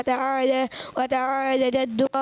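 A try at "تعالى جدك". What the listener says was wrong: वताला, लाम पर भी तो खड़ा जबर है ना भाई, तो खड़े जबर को कितना खींचते हैं? एक अलिफ के बराबर खींच देना, 2 हरकत के बराबर, तो एक अलिफ खेलेंगे। बाद लोग वताला जद्दू का पढ़ देते, तो लाम को नहीं खींच रहे होते, तो ये गलती हो जाती है।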